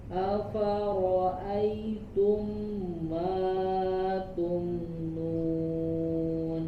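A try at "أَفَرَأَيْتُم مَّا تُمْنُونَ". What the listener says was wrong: Ma dua harokat, tidak kepanjangan.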